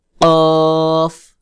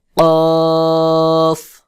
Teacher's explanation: কফ, ক, কফ জিহ্বার গোড়া ঠিক তার বরাবর উপরের তালুর সঙ্গে লাগাইয়া শক্ত করে গোল মতো করে আওয়াজ উচ্চারণ হবে, যেমন কফ, কফ। কাফ, কাফ কফ শক্ত করে উচ্চারণ হবে আর কাফ পাতলা করে উচ্চারণ হবে